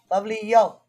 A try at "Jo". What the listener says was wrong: it's probably Joe then. The J usually is pronounced there. if it was like although the Filipinos do have Spanish influence, so the J could be a Yo.